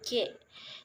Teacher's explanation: oleh keterlibatan Tengah lidah lamina dan langit-langit keras kepala Tum caranya Tengah lidah sebagai artikulator menyentuh langit-langit keras sebagai titik artikulasi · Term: bunyi lamino palatal, bunyi laminopalatal